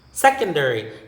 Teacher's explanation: Secondary, the stress is in the first syllable.